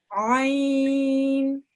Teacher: This is a thin sound, okay? But it comes from the middle of your throat